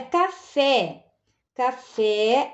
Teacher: o fé é a sílaba tônica é a última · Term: oxítona